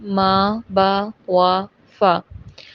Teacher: 4 ہونٹوں سے ادا ہوتے ہیں: ما، با، وا، فا۔